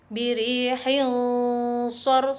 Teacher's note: Sedangkan pengucapannya samar-samar antara idhar dengan idgham disertai dengung yang panjangnya 2 harokat atau 2 ketuk. Suara nun atau tanwin masih tetap terdengar namun samar-samar antara idhar dan idgham. Kemudian bunyi samar tersebut terus bersambung dengan makhraj berikutnya. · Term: bacaan ikhfa